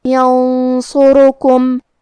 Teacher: صاد حروف الاخفاء میں سے ہے، لہذا ہمیں یہ حکم کو غنہ کے ساتھ ادا کرنا ہے. کیونکہ صاد حروف تفخیم میں سے ہے اور غنہ اپنے اگلے والے حرف کا حکم لیتا ہے تفخیم میں اور ترقیق میں، لہذا ہمیں غنہ کو بھاری آواز میں ادا کرنا ہے.